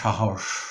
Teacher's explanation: যেমন সাহস, এই যে শব্দটি, এখানে দন্তস্ব, দুটো দন্তস্বই কিন্তু তালব্য স এর মতো উচ্চারিত হলো